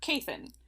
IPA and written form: ˈkei.θən (Kathan)